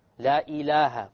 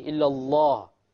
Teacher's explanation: The first lamb in ilah is light. La ilaha. And the second lamb is heavy.